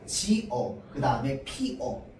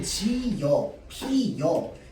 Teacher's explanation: 반모음이 첨가된 발음이 표준 발음으로 인정된다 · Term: 반모음 첨가